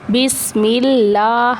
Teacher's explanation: بسم اللہ، ٹھیک ہے، ملہ، میم کو جو ہے وہ ہم نے لام کے ساتھ با سین زیر بس میم لام زیر مل بسم اللہ، لام کے اوپر کھڑی حرکات ہے، ٹھیک ہے، لام کے اوپر شد آ رہی ہے، میم کو لام کے ساتھ ملانا ہے